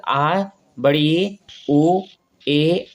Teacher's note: दीर्घ स्वर में क्या होता है? दो मात्रा का समय लगता है।